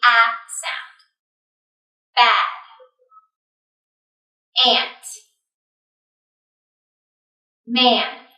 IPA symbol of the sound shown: æ